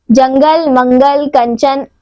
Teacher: अनुस्वार इसका उच्चारण नाक से होता है